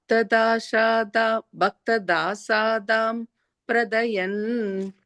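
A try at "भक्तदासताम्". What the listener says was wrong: Da satam. You added an extra A there. Bhakta da satam pratayan.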